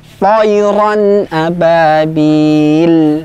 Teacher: ta, ya, ta huruf tebal juga. Kita angkat pangkal lidah kita.